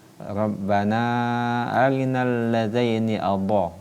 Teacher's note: Huruf isti'alah ini yaitu huruf ketika penuturan hurufnya kita membacanya dengan meninggikan atau mengangkat lidah ke langit-langit pada penuturan huruf dha.